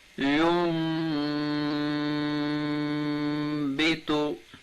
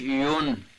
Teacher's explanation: یہ نون ساکن ہے اور اس کے بعد با حرف با آئی ہے، تو با جب آ جائے نون ساکن کے بعد تو وہاں پر اقلاب ہوگا اور غنہ بھی ادا کریں گے، غنے کے ساتھ اس کو پڑھیں گے